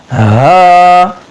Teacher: جو سینے کے قریب ہے حلق کا حصہ وہاں سے یہ ادا ہوتا ہے